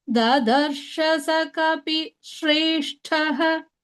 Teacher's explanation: Shrestha should have only sh, not s.